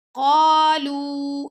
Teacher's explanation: زبان کی جڑ جب اسے ٹکراتی ہے تو پھر قوف ادا ہوتا ہے، تو قوف کے ساتھ الف مدہ ہے۔ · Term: قاف